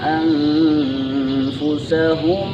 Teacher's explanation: Nah, ketika hukumnya ikhfa, nun sukun bertemu fa, maka hukumnya atau bacaannya disamarkan bunyinya dan ditahan selama 2 ketukan